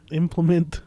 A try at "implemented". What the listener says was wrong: but it has the D at the end.